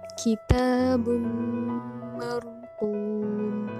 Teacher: Di situ ada tanwin bertemu dengan huruf mim, maka dibaca idgham bigunah.